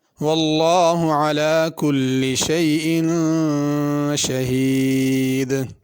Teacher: واللہ اس جگہ لفظ اللہ کے لام کو پر پڑھنا ہے، باریک نہیں پڑھنا